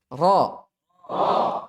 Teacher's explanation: Adapun ro ketika fathah, ya, dia dibaca tebal.